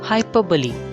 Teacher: the r after hyper is silent